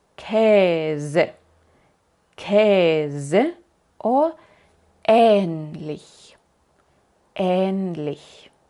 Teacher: Largo es el mismo sonido, pero más largo. Aquí no cambia el sonido, sino nada más la duración. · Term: E larga